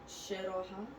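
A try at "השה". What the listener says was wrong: Hashe. Hashe. No, there's no vowel after the hey, so the hey closes the sound. So it's hashe, right?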